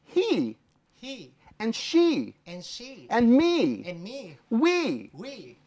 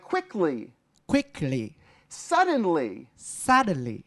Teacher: all words in English that end in a y are a high e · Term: high e sound